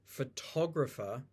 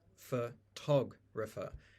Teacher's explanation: the Tog is stressed for tog refer and then all of the other vowels through vowel reduction have gone back to a schwa